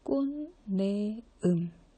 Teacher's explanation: 대표 받침 디귿으로 나는데 이 받침 디귿이 내음의 니은이랑 만나서 니은 니은으로 바뀌어요. 그래서 꽃내음 그랬을 때 이렇게 비음이 아닌데 비음으로 바뀌는 걸 비음화라고 얘기를 하죠.